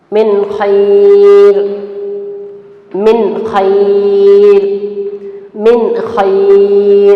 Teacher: اور نون کو اظہار کرتے وقت کیا کرنا ہے، کیا نہیں کرنا ہے؟ نون کو ظاہر کر کے پڑھنا ہے، ایک دم نون کلیئر سے سنانا چاہیے